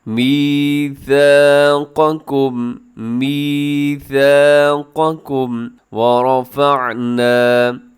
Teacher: را آپ نے موٹا پڑھنا ہے کیونکہ را کے اوپر حرکت ہے